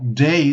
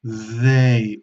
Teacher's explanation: Sería day, de día, sería una explosiva, una D normal, y esto sería they, una D interdental